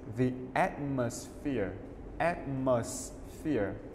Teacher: Trọng âm đứng ở âm đầu tiên.